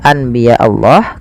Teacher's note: membalikkan suara Nun menjadi suara mim awalnya Anbiya Allah karena bertemu dengan ba maka diganti dengan mim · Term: iqlab